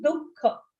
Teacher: Make sure you pronounce it with a visarga, dukkha.